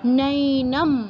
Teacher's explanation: অনুস্বারের স্থলে ময়ের মতো উচ্চারণ হবে যেহেতু পরবর্তী শব্দ আছে পবর্গীয়।